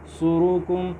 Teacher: صاد پہ سیٹی کی آواز بھی ہونی چاہیے، تھوڑا موٹا بھی ہونا چاہیے